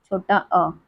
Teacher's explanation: मध्य स्वर जिनके उच्चारण में जीभ का मध्य भाग सक्रिय होता है